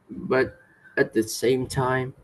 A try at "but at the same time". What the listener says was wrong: But then again, cái từ này at thì có hai cái phát âm này. First nó là at thì là đọc chuẩn, chưa? Còn khi mình nói nhanh đôi khi mình đọc là âm ư nhá. Chứ không bao giờ nó là ất được. Trong tiếng Anh không có âm nào ất được.